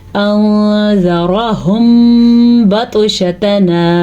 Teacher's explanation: होंठों को बंद करके गुन्ना किया इख्फा शफ़वी की वजह से